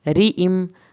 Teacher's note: را کے نیچے زیر ہے اس لیے پتلا پڑا جائے گا